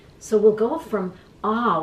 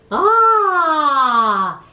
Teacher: So we'll go from ah, which is probably the most open sound.